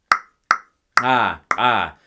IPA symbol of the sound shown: ǃ